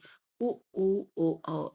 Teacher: आवृत्तमुखी में क्या होता है कि स्वरों के उच्चारण में होंठ गोलाकार नहीं होते, और वृत्तमुखी में इसमें गोलाकार होते हैं। ठीक है, स्वरों के उच्चारण में होंठ गोलाकार होते हैं